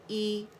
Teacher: हमज़ा कसरा ई, lower जा एक count के लिए नीचे ड्रॉप हो गया, और जो ज़बान का दरमियानी हिस्सा है वो रेज़ हो गया